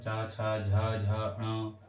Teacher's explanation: च वर्ग को तालू से बोला जाता है